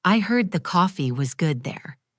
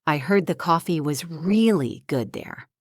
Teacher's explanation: By stressing the word really, they add a layer of excitement and recommendation.